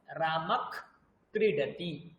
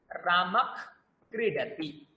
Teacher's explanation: আর বিসর্গ ছিল, বিসর্গের জায়গায় একটা হালকা খ চলে আসবে